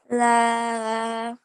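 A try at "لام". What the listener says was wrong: Okay, so this time you did a la, and you didn't do the at the end. You have to do a la, sound, okay? When you get to the meme, you close your lips and you stop the air. You stop the sound. La.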